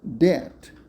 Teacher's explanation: another feature of this dialect is the way /ð/ and /d/ are interchanged, for example, instead of that /ðæt/, dat /dæt/.